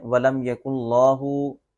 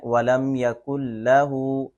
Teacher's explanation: شاید لوگ اس لام کو لفظ اللہ کا لام سمجھ کے موٹا پڑھ دیتے ہیں